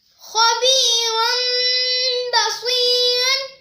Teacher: ہم تنوین کو میم سے بدل کر اخفا کریں گے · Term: اقلاب